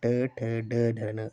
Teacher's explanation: जब हम ट का उच्चारण कर रहे हैं तो हमारे तालु के मूर्ध भाग से जो है वो उच्चारण हो रहा है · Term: मूर्धन्य व्यंजन